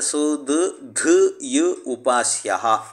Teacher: ಎರಡನೇ ಧಕಾರ ಆಗ ಏನಾಗುತ್ತೆ ಪೂರ್ವ ಧಕಾರಕ್ಕೆ ಅಲ್ಪಪ್ರಾಣ ಧಕಾರವು ಜಶ್ ಅಂತ ಹೇಳಿದ್ರೆ ಅಲ್ಪಪ್ರಾಣ ದಕಾರವು ಆದೇಶವಾಗಿ ಬರುತ್ತೆ ಬಂದರೆ ಆಗ ಸುದ್ದು ದ ಯು ಉಪಾಸ್ಯಹ ಅಂತ ರೂಪ ಆಗುತ್ತೆ ಹೀಗೆ ಇರುವಾಗ